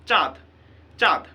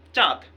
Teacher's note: এই যে চন্দ্রবিন্দু এটা কিন্তু নিজে নিজে উচ্চারিত হতে পারে না। চন্দ্রবিন্দুর জন্যে চ এর মধ্যে একটু এই নাসিক্য ভাবটা চলে আসছে।